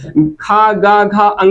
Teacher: खा गा घा अंगा का उच्चारण स्थान कंठ है।